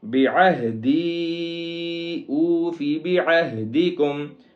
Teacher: یہاں پہ بعہدی میں عین ہے اور آگے ہا جو ہے وہ سینے والا ہا ہے، اس کو سینے سے نکالیں گے · دال یا زیر دی کے اوپر چھوٹی مد ہے جس کی وجہ سے اس کو 1 سے 3 گنا لمبا کریں گے